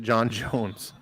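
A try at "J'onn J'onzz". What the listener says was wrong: it's like a soft J. It's not like John Jones. Ja. It's like you know Zsa Zsa Gabor. It's kind of like that.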